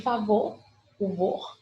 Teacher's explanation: é a última sílaba e a sílaba mais forte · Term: sílaba tônica